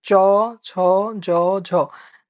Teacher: চ ছ জ ঝ জিহার মধ্যভাগের কাজ আছে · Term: তালব্য ধ্বনি